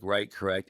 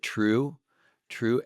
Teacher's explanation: correct and right end with consonants and it's kind of a harsh sound whereas true ends with a vowel and almost like a warmth true plus we want the truth